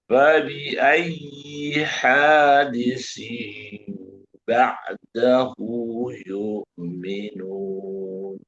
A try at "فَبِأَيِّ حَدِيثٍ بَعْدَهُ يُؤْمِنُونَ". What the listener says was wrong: Haknya nggak boleh panjang, tapi bagus.